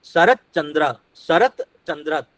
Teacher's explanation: त की जगह पे यहाँ पर क्या उच्चारण हुआ? च हुआ, क्योंकि बाद में च है